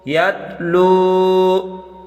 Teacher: لام کو ایک الف کی مقدار کھینچ کر پڑھیں کیونکہ اس کے آگے واو مدہ ہے